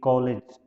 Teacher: ये जो है आ और ओ के बीच की ध्वनि है